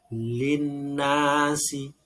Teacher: Al bertemu dengan nun. Jadi ini idgham syamsiyah.